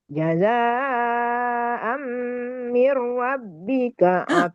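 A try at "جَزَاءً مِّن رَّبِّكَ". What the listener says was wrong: Ingat ro-nya tadi. Jangan sampai roa, tapi ro. Jazaa'am mir rabb. Nah, Mirab.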